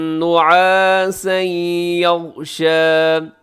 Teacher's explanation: نعاسا پہ تنوین کے بعد یا ہے تو یہاں ادغام ہوگا غنے کے ساتھ